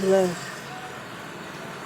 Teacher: उच्चारण में जीभ बेलन की तरह लपेट खाती है।